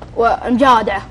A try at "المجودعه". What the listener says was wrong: المجودعه. اول شيء الآ تقلب واو. هتقول والمجودة والمدعف